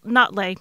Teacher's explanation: it's kind of got a glottal stop in there